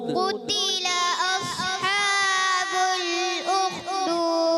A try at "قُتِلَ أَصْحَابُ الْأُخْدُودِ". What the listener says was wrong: پیارے بچے قاف تھوڑا موٹا رکھیں.